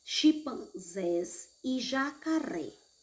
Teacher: a sílaba tônica é a última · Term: oxítonas